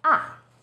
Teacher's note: fourth tone starts High then Falls sharply